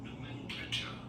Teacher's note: Nomenclature with an emphasis on the second syllable.